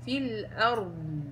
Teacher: إنما هو صوت رخاوة الضاد وليست الاستطالة